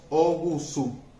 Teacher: Aquí la A final átona desapareció.